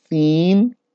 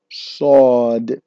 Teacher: they both have a whistle sound, but Seen is thinner and Sawed is thicker